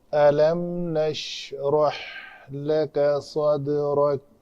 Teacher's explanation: دال کے اوپر قلقلہ کریں گے، قاف تا با جیم دال، یہ 5 حروف ہیں، جب بھی ساکن آئیں اس کے اوپر قلقلہ کرتے ہیں۔